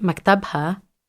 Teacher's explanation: that second syllable there, tab, has a CVC, and because of the rules, it gets assigned the stress.